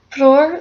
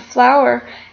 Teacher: English did with the words sota and rota. Fleur, spelled F-L-O-U-R, at some point in time evolved from the O vowel sound to OW vowel sound